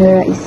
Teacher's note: Perkataan Rais mengandung AI iaitu gambungan vokal A dan I yang dilafazkan bersambung sebagai satu bunyi yang pekat menjadikan sebutannya lebih lancar dan mencerminkan ciri khas bunyi dialek menu Sarawak seperti dalam sebutan nerais.